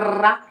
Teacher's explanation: देखो रा बोलने में जीभ जो है र होती है, यानी जीभ कंपन करती है, यानी वाइब्रेट करती है। तो रा के बोलने में चूंकि जीभ कंपन करती, वाइब्रेट करती है, इसलिए रा को प्रकंपी व्यंजन भी कहा जाता है